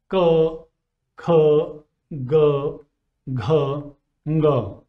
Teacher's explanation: They are made in the velum or the soft palate in the vocal apparatus at the back of your throat. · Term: velar sounds